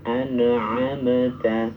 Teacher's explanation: Jadi huruf nun dan huruf mimnya jangan mantul. An'amta. Kalau mantul nanti jadi qalqalah. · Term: izhar